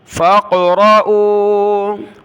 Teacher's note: فا کو قاف کے ساتھ ملانا ہے، قاف پر قلقلہ ہوگا ، فا قاف زبر فاق، را زبر را، حمزہ واو پیش